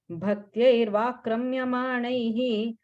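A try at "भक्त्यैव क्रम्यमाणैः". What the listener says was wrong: Anu, on the second line, first word, right? I heard an extra ir sound. So it's Bhaktyaiva Kramya Manaihi.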